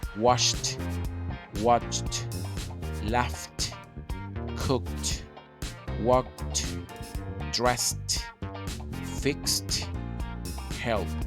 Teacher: just read have vibrations in other words they are voiceless therefore the Eed D at the end of these verbs is going to be pronounced T